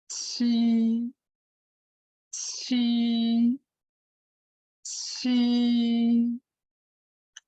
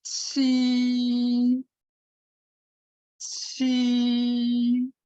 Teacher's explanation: The next one, the initial sound should be pronounced very similar to Ji, but you should breathe out the air from your mouth